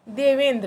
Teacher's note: देव का अ और इंद्र का ई मिलके क्या बन जाएगा, ए। तो ए, तो ये हट जाएगा, ये ई जो है इसका ये खत्म हो जाएगा, ये दोनों मिलकर एक हो जाएंगे देवेंद्र।